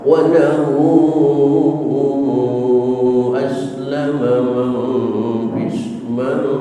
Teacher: mad silah tawilah semacam dalam ayat ini walahu itu boleh sampai 6 harokat